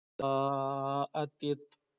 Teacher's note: جس طریقے سے آپ جیم علی زبر جا پڑھتے ہیں سیم اسی طریقے سے یہ بھی پڑھیں گے، لیکن بس ذرا کھینچنا زیادہ ہے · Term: مدہ زبر